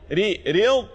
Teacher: مفخمة مغلظة وفيها صفة الاستطالة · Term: الضاد المفخمة